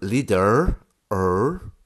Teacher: in the north that r sound can become leader er with a kind of curved soft r